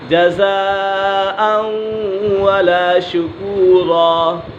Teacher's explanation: یہاں پہ ادغام یرملون ہے کیونکہ تنوین کے بعد واو حرف یرملون میں سے ہے تو یہاں ادغام یرملون ہوگا، یعنی غنہ کر کے پڑھیں گے۔